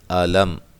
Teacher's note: علم لام کو موٹا نہیں کرنا، میم ساکن کا اظہار ہے